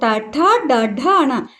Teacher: ఈ పలికినప్పుడు మన నాలుక ఎక్కడ తగులుతుంది నాలుక పైన తగులుతుంది అంటే మూర్ధన్యానికి తగులుంది కాబట్టి ఇవన్నీ కూడా మూర్ధన్యాలు